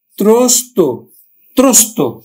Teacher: শব্দের অন্তে সংযুক্ত বর্ণের অ ও এর মতো উচ্চারিত হবে